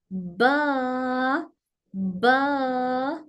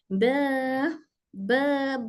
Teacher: ब ओके दोनों होट को थोड़ा सा लाइट टाइट टच करेंगे दोनों होठों का वेट पार्ट मिल जाएगा फिर उसके बाद हल्का हल्का होठ खुलते हुए ब की आवाज आदा होगी ब ब ब चकि लाइट लेटर है तो इसको बा बा